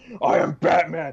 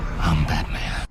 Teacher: the guttural inflection in Christian Bale's voice